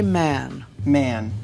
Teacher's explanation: normally with the southie accent that a sound becomes nasal prior to an m or an n